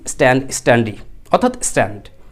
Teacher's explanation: স সাউন্ডের পরে ট সাউন্ড আসার কারণে অ্যাসপিরেট করছেন না, আপনি বলতেছেন স্ট্যান্ড, স্ট্যান্ডি, অর্থাৎ স্ট্যান্ড।